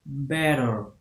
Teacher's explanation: Example of the flap within the English language can be found in the word better. In many dialects of English, the TT in the middle of the word is pronounced with a flap, through which the sound is not fully enunciated, but rather produced through the rapid movement of the tongue toward the roof of the mouth.